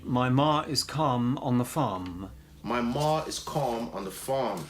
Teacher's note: So calm and farm rhyme exactly. There's no R in calm. We don't pronounce the L. And there's no R effectively in farm.